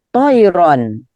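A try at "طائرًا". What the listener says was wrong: Ya, to'iron. Begitu.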